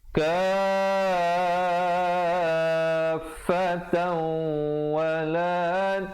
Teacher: Kafatau, di situ asalnya kafatan, tan, tapi bila datang waw jadi idgham bi gunnah, dengungkan.